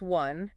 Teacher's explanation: One is pronounced with a W sound at the beginning